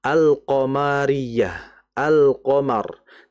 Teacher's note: Izhar itu karena lamnya dibaca jelas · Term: izhar al-qamariyah